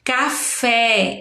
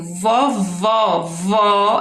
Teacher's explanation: café é um som aberto vovó é um som aberto